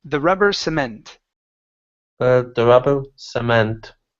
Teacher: The stress is at the very end.